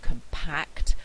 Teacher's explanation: in the adjective compact the stress is on the second syllable